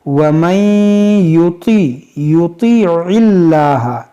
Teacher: یہاں پر دیکھیں نون ساکن کے بعد یا ہے, یہاں پر ادغام کریں گے اور یہاں پر طا ہے اس کو موٹا کریں گے اور یہاں عین ہے اس کو حلق سے ادا کریں گے